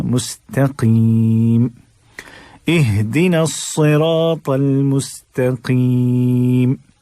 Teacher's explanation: قاف بڑا بھاری بھرکم لفظ ہے، بھاری بھرکم حرف ہے، تو اس کو موٹا ہی رکھنا ہے